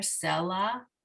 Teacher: put the emphasis on the first syllable here, selah.